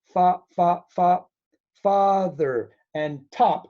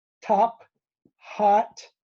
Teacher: many O sounds have this ah sound